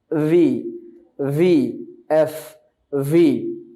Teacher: ভি আর এফ এর মাখরাজ একই জায়গা থেকে, অর্থাৎ নিচের ঠোঁট উপরের দাঁত।